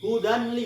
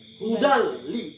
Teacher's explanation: Hudal li, nggak boleh dengung. Dimasukkan tadinya tanwin ke dalam huruf lam. Inilah yang dimaksud dengan memasukkan idgham, dengan tidak berdengung.